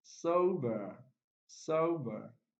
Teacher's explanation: the prime stress is on the first syllable